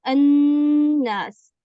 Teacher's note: یہ لام پورا کا پورا اس نون کے اندر مدغم ہو چکا، اب لام موجود ہی نہیں رہا، اب وہ غائب ہو چکا ہے، نون میں شفٹ ہو گیا سمجھ لیں.